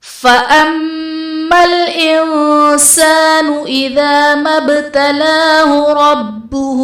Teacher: فَأَمَّا الْإِنسَانُ میں میم مشدد ہے، یہاں پر غنہ کریں گے.